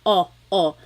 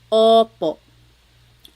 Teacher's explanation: Your tongue gets kind of pushed back and down a little bit and the inside of your mouth is open and wide. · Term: letter O